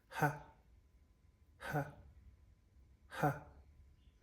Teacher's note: For the glottal fricatives, we have the sound ha for the voiceless